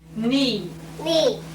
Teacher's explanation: a very subtle distortion when he said me where the M was in between a plosive and a nasal